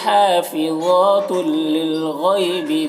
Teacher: इदगाम ताम हो रहा है, बग़ैर गुन्ना के इसे पढ़ना है